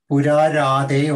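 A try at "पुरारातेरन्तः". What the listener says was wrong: The first word. The first word. The first word is not Randha also, not Radhe also. It is Purarate Rantaha. Because in the one I've got. There is no dha, there is no dha. Purarate Rantaha.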